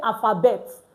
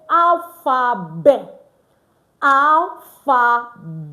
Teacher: The T is not pronounced at the end.